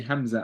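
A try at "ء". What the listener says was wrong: No, pronounce the sound of it, not the name. Ah, ah, ah. So it comes from the bottom of the throat. Ah.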